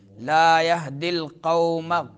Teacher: قوم میں واولین ہے، واو ساکن اس سے ما قبل زبر ہے تو واولین